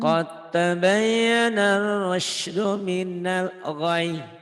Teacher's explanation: Qad, qadnya hilang ya, masuk ke ta, Iya. diidghamkan.